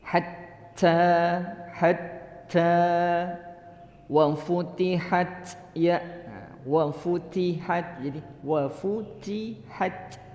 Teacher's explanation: Nah, ini memang harus dibiasakan kita, ya, membaca hatta dengan hembusan angin hams